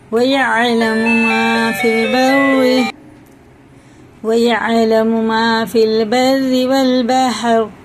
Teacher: دونوں راز زیر سے باریک پڑھی جائیں گی